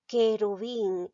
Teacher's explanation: Entonces, esta palabra no tiene diptongo, porque recuerda, el diptongo se produce cuando hay dos vocales seguidas. Y en querubín no pronuncio la U.